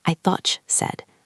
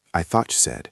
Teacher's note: The word thought ends in a t and the word you begins with a y. When these sounds meet, they often blend into a ch sound.